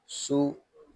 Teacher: سین حروف صفیریہ میں سے ہے، اس میں سیٹی کی آواز آئے گی